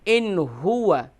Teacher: یہاں پر اخفا نہیں کریں گے بلکہ یہاں پر اظہار کریں گے کیونکہ نون ساکن کے بعد ہا ہے